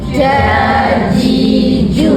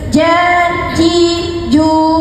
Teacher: Dia jangan moncong Jangan moncong. Dia bersifat istifal. Istifal bermaksud lidah rendah saja, tapi lidah tu kena berisik juga.